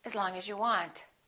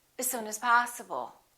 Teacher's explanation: the vowel in the preposition generally becomes the neutral sound the uh sound